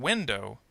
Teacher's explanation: with the word window the first syllable is stressed